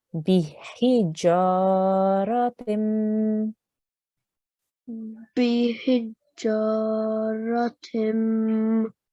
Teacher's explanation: we don't want to elongate this letter Ra here. It's just a simple 1 second stroke, but we do want to elongate the Jim.